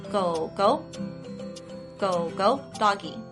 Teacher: instead of changing the first go to a second tone you change the second go to a second tone